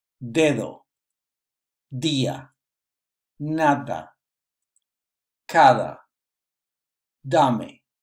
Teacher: The pronunciation of the de must occur with your tongue between your lips.